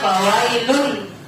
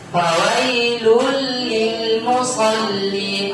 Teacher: Nah, jadi domain bertemu dengan lam dalam ilmu tajwid itu namanya idgham bila gunnah. Jadi tidak dibaca fawailun, tapi dimasukkan fawailul lil musallin.